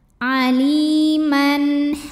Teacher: Halqi itu artinya tenggorokan ya. Maka bunyi tanwin ini yang asalnya bunyi n, maka tetap dibaca n atau jelas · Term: izhar halqi